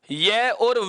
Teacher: यह और वह वर्ण का उच्चारण करते समय हमारी जीभ किसी मुखावयव को स्पर्श नहीं करती। यह और वह वर्ण का उच्चारण करते समय जीभ किसी भी मुखावयव को स्पर्श नहीं करती है, अर्थात इन दोनों वर्णों का उच्चारण करते समय जीभ को किसी प्रकार की क्रिया प्रतिक्रिया नहीं करनी पड़ रही। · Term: अर्ध स्वर